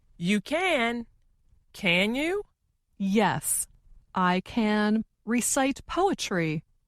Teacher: the more wanted to emphasize or make her meaning clear, the slower she said the word can